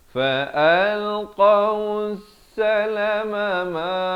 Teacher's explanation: Ma 2 kali. Ma yang pertama 1 harakat. Ma yang kedua 2 harakat.